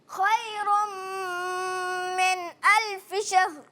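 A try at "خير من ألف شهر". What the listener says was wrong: ماشاءاللہ ماشاءاللہ. اچھی کوشش کی, بہت اچھی کوشش کی.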